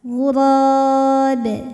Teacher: Karena ada huruf qalqalah yaitu ba yang sukunnya ini karena berhenti, maka dibaca memantul dengan pantulan yang besar. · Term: qalqalah kubra